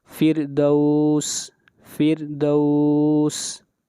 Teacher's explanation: اس مثال کے اندر را ساکن ہے، اس سے پہلے والے حرف کے نیچے کسرہ ہے، اور را ساکن کے بعد حروف مستعلیہ میں سے کوئی حرف نہیں ہے بلکہ دال ہے، اس لیے اس را کو باریک پڑھیں گے